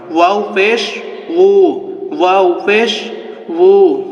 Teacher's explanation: ওয়াওটি দুই ঠোঁটের মাঝখান থেকে ওয়াও উচ্চারণ হয়